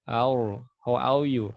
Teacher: Orang Inggris ya tidak ada getaran pada huruf ro.